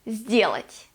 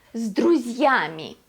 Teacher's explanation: S turns into z because then we have d.